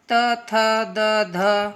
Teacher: वो आपकी जो जीभ है वो दांत में टच करेगी।